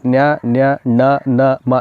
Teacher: ಇವೆಲ್ಲವನ್ನು ನಾವು ಮೂಗಿನ ಸಹಾಯದಿಂದ ಉಚ್ಚಾರ ಮಾಡ್ತೀವಿ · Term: ಅನುನಾಸಿಕ ಶಬ್ದಗಳು